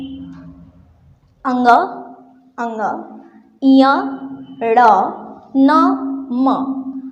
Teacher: ध्वनि जो निकलती है वो नाक से ही निकलती है।